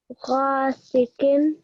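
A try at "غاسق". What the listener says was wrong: ghasiqin. The gha was lovely. Make sure that the qaf also is thick, okay?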